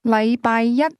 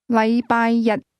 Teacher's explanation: The difference is that the word one used with Monday is pronounced with a high level tone, while the word day is pronounced with a low level tone